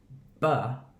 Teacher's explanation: B is vibrating in the throat. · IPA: /b/